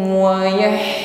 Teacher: Minkum wala minhum wayah menyebar di situ bunyi hamesnya. Ha sukun sifatnya hames jaroyah dan nafasi, nafas menyebar mengalir.